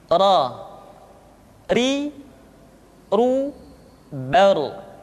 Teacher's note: diucapkan dengan menyentuhkan punggung lidah dengan langit-langit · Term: huruf ro